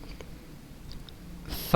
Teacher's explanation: di bibir bawah bagian dalam pada posisi menempel dua gigi seri atas